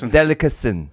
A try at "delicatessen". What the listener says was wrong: See? You're missing one section. You're missing the whole section.